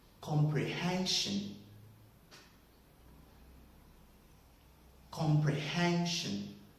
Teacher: from the first syllable, com, we have a middle stress there, which is the second stress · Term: secondary stress